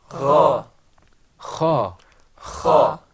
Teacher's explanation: They all came from the back of the throat.